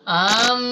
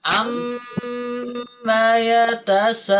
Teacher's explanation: ketika masuk ke suara mim ya, ke suara mim, diusahakan tidak ada mad ataupun tidak ada panjang.